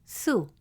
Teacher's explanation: The letter Sa with the short vowel Dammah makes the sound Su, short and round, with your lips rounded.